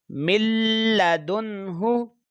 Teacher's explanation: نون ساکن کے بعد ہا حروف اظہار کا ہے تو یہاں پر غنہ نہیں کرنا، ملدن ہوں۔ اور یہ نون یہاں پر غیر قلقلہ کی صورت میں بھی پڑھیں گے، اس کی آواز جو ہے حروف قلقلہ کی طرح نہیں آنی چاہیے، یعنی کہ لوٹ کرنا آئے۔